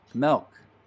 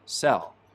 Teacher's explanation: in some utah accents though some front vowels get lowered before l sounds